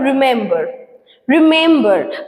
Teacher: For example, in the word রিমেম্বার, রিমেম্বার মেমটার উপরে বেশি focus হচ্ছে। রিটা হচ্ছে আনস্ট্রেস, মেমটা হচ্ছে স্ট্রেস, আর বার্ডটা হচ্ছে আনস্ট্রেস। ঠিক আছে, এখানে স্ট্রেসটা মেনলি কোথায় পড়ছে, গিয়ে মেমের উপরে পড়ছে। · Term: অ্যামফিব্রাক